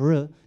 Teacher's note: dilimiz Ağzımızın İçerisi çok geriye doğru kıvrılmış likit bir ses ortaya çıkmış oluyor havanın davranışı ne hava bulduğu yerden dışarı çıkıyor tıpkı bir sıvı